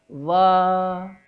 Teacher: ऊपर के दांत और नीचे के होंठ से बोला जाता है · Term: दंतोष्ट अक्षर